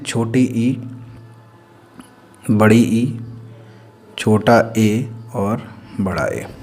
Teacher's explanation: अग्र स्वर मतलब कि जीभ के अगले हिस्से से बोलने वाले स्वर